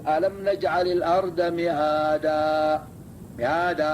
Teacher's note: تمد بقدر حركتين عند التوقف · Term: مد عارض